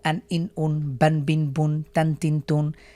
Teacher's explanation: হলো তানভীন দুই জবর দুই জের দুই পেশকে তানভীন বলা হয় তানভীনের উচ্চারণ টান ছাড়া দ্রুত পড়তে হয় আমরা যখন তানভীনের উচ্চারণ করব শেষে একটা দন্ত ন যোগ করবো